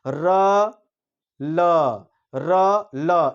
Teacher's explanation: जो दांत का मूल वाला जो दांत होता है उसमें र और ल उससे उच्चारित होते हैं, र ल, ये मूल मूल से होता है। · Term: दंत मूल